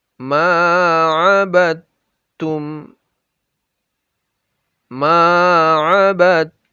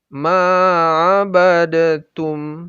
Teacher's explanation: Jadi, dal itu berharokat sukun, sementara tum berharokat dhammah. Makanya, pembacaan dalnya tidak ada lagi, termasuk juga qalqalahnya. Jadi, salah kalau dibaca ma'abadatum. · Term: Lebur huruf dalnya